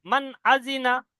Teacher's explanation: পরিষ্কার করে মান আজিনা, আওয়াজটাকে নাকের মধ্যে ছুপাবো না বা আওয়াজটা নাকের মধ্যে ধরে রাখবো না। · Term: জাহির